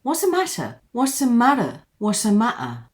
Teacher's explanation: So here for the two Ts, we have a complete glottal stop. And would you believe this glottal stop is just holding the air. Don't let it go in your airways.